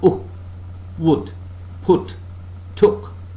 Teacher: Part of the tongue nearer to center than to back is raised just above the half-closed position.